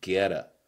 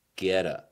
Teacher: 这 儿 的 字 母 T 要 用 flap T 的 方 式 来 处 理。